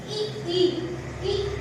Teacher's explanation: अग्र स्वर मतलब जिसमें उच्चारण करते समय जीवा हमारी आगे आए, आगे।